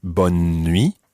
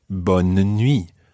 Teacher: sometimes it might be bun me almost with a kind of skipping n in the middle or other times it may be bon nui with almost a mini syllable in the middle there bun and me and that just really depends where you are